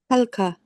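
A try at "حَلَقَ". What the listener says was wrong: No, so this lam, the same thing. What vowels on the lam? You're saying helka. Halaka.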